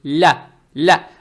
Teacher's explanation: Далее стоит буква лям с фатхой. Фатха приобретает оттенок я, то есть ля.